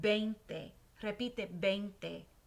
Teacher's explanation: we're going to pronounce the V here with like a little B sound, like a soft letter B